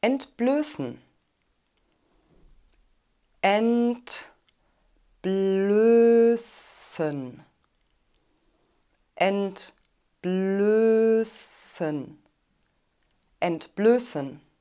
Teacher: wir haben einen langen geschlossenen umlaut ö ein scharfes s also einen stimmlosen es laut und eine reduzierte and silbe das wird also als schwach oder